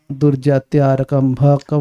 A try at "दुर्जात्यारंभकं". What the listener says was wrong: आरक का हो गया भाई। दुर्जात्यारंभकम पापम यत् स्यात् प्रारब्धमेव तत्।